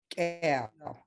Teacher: When you hear that, it's a glottalized K